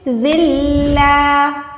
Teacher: صرف منہ سے ادائیگی ہوگی، گننے یا نون کی آواز یہاں پر نہیں آئے گی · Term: ادغام بغیر گننے والا